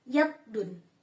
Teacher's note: Palatal ini ee bunyi yang dihasilkan ketika bagian tengah lidah mendekati langit-langit keras. Huruf palatal yaitu ya.